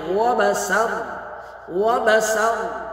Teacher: وبسر رو کو پر کریں گے، سین کو بالکل سختی سے سیٹی کے ساتھ ادا کریں گے۔